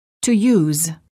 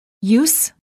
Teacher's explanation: have a Z sound if they're verbs and have a S sound if they're nouns.